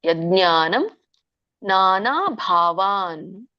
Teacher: ನಾನಾ ದೀರ್ಘ ಇದೆ, ಮತ್ತೆ ಭಾ ಮಹಾಪ್ರಾಣ. ನಾನಾ ಭಾವಾನ್ ವ್ಯಂಜನ ಇದೆ ನಕ್ಕೆ, ಮತ್ತೆ ಪೃಥಕ್ ಅಲ್ಲಿ ಮತ್ತೆ ಗ್ಯಾಪ್ ಬಿಡಂಗಿಲ್ಲ.